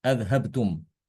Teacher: Ini bacaan Imam Hafiz ya. Dia hamzanya cuma satu aja di sini.